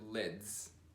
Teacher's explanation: a Z is like a DZ together